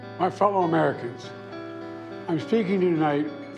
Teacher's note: His s’es have a th sound, like he has a lisp